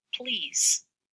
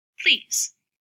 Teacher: and pronounce it please we've got two slightly different sounds here both are alveolar lateral approximants but one is voiced and one is voiceless · because of perseveratory assimilation, I could devoice that L and pronounce it please. · Both are alveolar lateral approximants, but one is voiced and one is voiceless. So you'll notice that we looked at these diacritics back in the IPA, that little mark underneath that shows that this normally voiced sound is now devoiced.